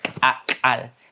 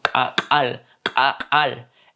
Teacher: se pronuncia completamente desde la glotis, desde la garganta y y vamos a sentir cómo se nos mueve acá, ¿no? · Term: glotal